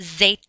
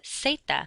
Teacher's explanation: the letter Z does not make a buzzing sound like it does in English you just pronounce it like an S